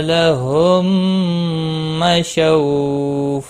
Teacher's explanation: میم ساکن کے بعد دوسرا میم آیا ہے، ادغام شفی ہوگا، غنہ کے ساتھ پڑھیں گے.